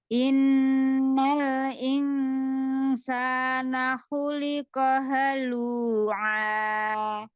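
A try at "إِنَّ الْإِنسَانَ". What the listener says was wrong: Masih terdengar kayak ya. Bukan ke huruf sin di mana maksudnya? Huruf sin, ujung lidah ya. Sejajar dengan sejajar dengan gigi seri bawah.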